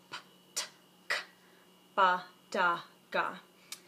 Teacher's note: ba is happening all in your lips da happens behind the back of your teeth